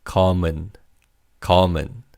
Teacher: Here, the second syllable begins with an 이응. So the 받침 in the first syllable, the 미음, carries over. And it's pronounced as 검은.